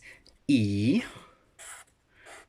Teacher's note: a flat vowel sound it's a monophthong it doesn't the vowel sound doesn't change in the mouth the